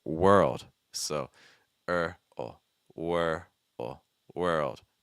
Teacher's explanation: Notice that when I'm doing that W sound for world, I'm keeping my lips straight.